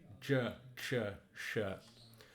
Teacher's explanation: the ZH, CH, SH, you want to curl your tongue back. So sort of give it a shape like this, and J, Ch, Sh.